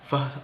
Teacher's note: labiodental sounds such as v, which involve the upper teeth and lower lip